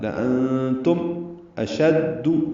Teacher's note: نون ساکن کے بعد تان کی وجہ سے اخفا ہے اور میم ساکن پہ اظہار ہے۔ لأنتم اشد، حمزہ اقصی حلق سے ادا کریں گے اور دال کو، شین کو دال سے ملائیں گے، دال کو معروف طریقے سے جلدی ادا کریں گے۔